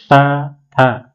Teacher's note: त थ दांत स्पर्श कर रहा है।